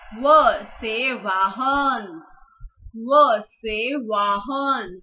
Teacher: व प्रोनाउंस करते वक्त हमें दांतों का और होठों का दोनों का उपयोग करना पड़ता है, इसीलिए इसे दंतोष्ठ वर्ग कहा जाता है।